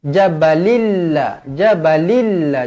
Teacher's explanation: Tanwin tak selari bertemu dengan lam, idgham bila gunnah.